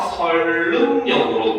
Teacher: 이 선릉역을 발음을 하게 되면은 유음화가 일어나서 설릉역으로 발음이 됩니다